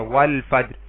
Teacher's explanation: فا حروف قمری میں سے ہے تو ال کا لام پڑھا گیا